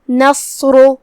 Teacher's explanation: راء پہ پیش ہے، یہاں راء کا بھی حکم ہے تفخیم. ہم صاد کو اور راء کو دونوں کو بھاری آواز میں ادا کریں گے.